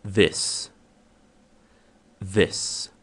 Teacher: O próximo som não existe na língua portuguesa. Ele é pronunciado como se você estivesse falando um D com a língua entre os dentes.